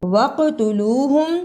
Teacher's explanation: قاف پہ قلقلہ کرنا، واو مدہ کو صحیح ادا کرنا